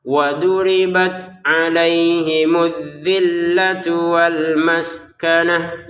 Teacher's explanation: Maskanah di sini t-nya kita baca ha karena berhenti ya.